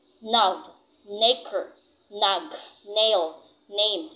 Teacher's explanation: alveolar nasal, which is the letter N